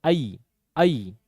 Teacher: पहले मुंह खुलता है फिर बंद होता है। आई आई तो पहले खुलेगा